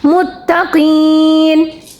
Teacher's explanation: اس کا مطلب ہے کہ یہاں ہم کیا کریں گے، اس کو وقف بھی کرنا چاہیں تو کر سکتے ہیں. وقف کریں گے تو نون کی زبر ساکن میں بدل جائے گی اور ہوگا متقین.